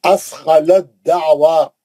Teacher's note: अब ता नहीं पढ़ेंगे, दाल में चले जाएंगे सीधा